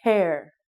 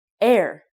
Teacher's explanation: It is hair. Again, when you make the H sound, it's a strong breathe out. Hair. If you don't say the H sound, it sounds like air.